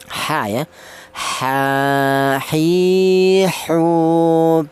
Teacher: Huruf ha ini keluarnya huruf berasal dari tengah tenggorokan. · Huruf H ini keluarnya huruf berasal dari tengah tenggorokan, di mana tengah tenggorokan itu keluarnya huruf ada dua, yaitu huruf H dan huruf Ain ya.